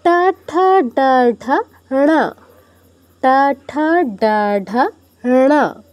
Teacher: চ বর্গের এগুলো হচ্ছে আমাদের উচ্চারণ তালুতে, আর টা বর্গেরগুলো মূর্ধায়, জিহ্বা মূর্ধায়